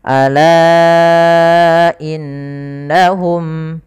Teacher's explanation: Itu kita baca dengan bacaan mad wajib munfasil, yang mana hamzanya terpisah, kita panjangkan 4 harokat. Ala innahum, hati-hati jangan sampai terlalu panjang sampai 6-7 harokat, misalnya 7 harokat.